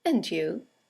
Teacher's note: and you is a statement it has a falling intonation and it's used to return the compliment or the greeting right